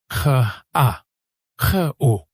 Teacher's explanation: Faites ce son, kr, comme si vous vouliez racler doucement le fond de votre gorge. Pas trop fort, pas trop agressif, juste un léger frottement.